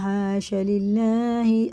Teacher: اللہ کا نام زیر سے باریک پڑھیں گے